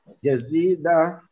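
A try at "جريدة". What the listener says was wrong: Jaridah. Jaridah. Huruf ra Ustaz sekali lagi.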